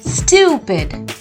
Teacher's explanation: You have to stress on the U syllable.